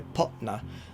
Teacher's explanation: I kind of pronounce it with like a glottal stop, so potna, like almost like you're putting a comma in there to sort of like cut it short and then na. · It's kind of like pot and then like a glottal stop, na, but it could also be like potna or popna.